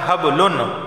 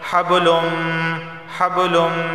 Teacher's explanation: نون کی آواز ہے حبلن، لیکن ادغام کا قاعدہ لاگو ہونے کی وجہ سے اس کو ہم پڑھتے ہیں حبلم